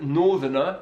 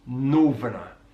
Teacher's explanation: he uses V on the TH